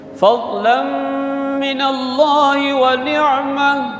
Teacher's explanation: Lam baris tanwin jumpa dengan mim. Itu dengung.